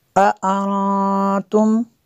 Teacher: نون ساکن کے بعد تا حروف اخفاء میں سے ہے تو یہاں پہ غنہ کریں گے